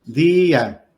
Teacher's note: la fuerza de la voz cae en la I